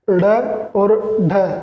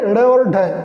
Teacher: द्विस्पृष्ट हम इसलिए कहते हैं क्योंकि इनमें जीभ दो बार ऊपर ड़ यानी दो बार तालु के स्पर्श करती है, और ताड़नजात एकदम जीभ ऊपर तालु के झटका मारती है, इसलिए इन्हें हम ताड़नजात कहते हैं। उत्क्षिप्त ऊपर ऊपर एकदम झटके से टच करती है जीभ, इसलिए हम इसको उत्क्षिप्त कहते हैं।